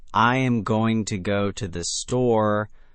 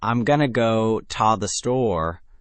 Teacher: gonna and ta become quick, unstressed blurs, while go and store get the real emphasis.